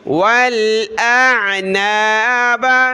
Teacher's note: حمزہ کو عین کے ساتھ ملایا، پہلے حمزہ کی آواز آئے پھر عین کی